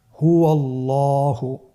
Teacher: এখানে আল্লাহ শব্দের দ্বিতীয় লামটি মোটা হবে